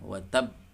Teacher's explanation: Namun karena di sini ada tasydid, maka tunaikan tasydidnya dulu, ya. Tasydidnya dulu tekan, kemudian dipantulkan · Ada ba bertasydid, ada ba bertasydid, kemudian ba memiliki sifat qalqalah atau memantul suaranya, ya, khususnya ketika sukun atau menjadi sukun barisnya karena sebab waqaf, seperti yang terjadi di sini Al-Masad ayat 1 wa tab, ya, ini sukun, ya, sehingga suara ba-nya dipantulkan.